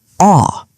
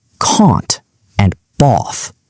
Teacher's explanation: drops his jaw down and makes a deep, round ah sound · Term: broad A